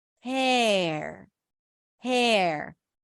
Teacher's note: you're taking the H and the r that are connected for her and you're stretching them out and you're creating space for a vowel